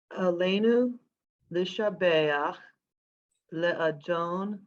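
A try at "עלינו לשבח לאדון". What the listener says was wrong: Slow down. Under the lamed, there is a vowel. I didn't hear the vowel when you said the word. Yeah, I was referring to the next word. You said l'shabeach perfectly.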